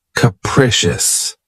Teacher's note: the stress is on the second syllable keep in mind that the first syllable has that schah sound